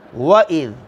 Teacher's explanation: غور کیجئے، سب سے پہلا حرف ہے واو، اور واو کے اوپر زبر ہے۔ واو ادا کرنی ہے ہونٹوں کو گول کر کے، اور زبر کو لمبا نہیں کرنا